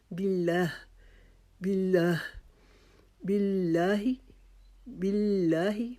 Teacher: لام کو باریک پڑھا جاتا ہے، جیسے باللہ، باللہ، باللہ، باللہ۔ باللہ کو بھی ہم ایک الف کے جتنا لمبا کھینچیں گے